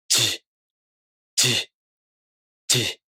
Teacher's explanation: The only difference between these sounds is also the tongue position. For this sound, the front part of the tongue, not the tip, lifts up to the back of the gum ridge, not the front. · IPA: [dʑ]